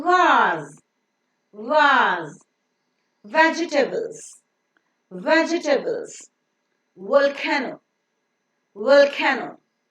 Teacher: V has got a phonic sound of oo, oo, oo. The lower lip comes very, very close to the upper teeth, leaving a small gap so that the air that is coming out from the lungs passes through it with a slight audible friction.